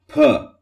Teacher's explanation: released and the air escapes with app lotion like in per where the lips closed the mouth cavity and suddenly releases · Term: stop sounds